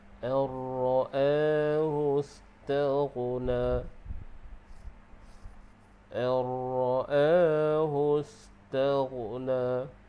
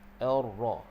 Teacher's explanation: Jadi di sini hukum adalah idgham bila gunnah yang dibaca dengan idgham kamil. Jadi nun itu kita masuk terus ke dalam ra. Ra. Jadi ra tu tebal.